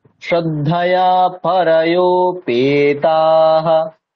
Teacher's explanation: পরায়ো এত দূর অব্দি একই রকম গলার স্বর, পেতে নিচে নামছে, খেয়াল করুন।